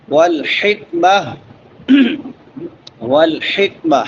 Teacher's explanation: ہا چھوٹی ہا ہے وسط حلق سے، حلق کے درمیان سے